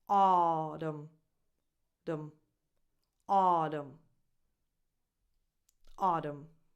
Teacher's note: So the first syllable is the stressed one. So you have aw as in awesome, just like August, and the rest is unstressed.